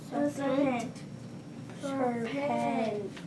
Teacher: So I think the accent should be on the first syllable.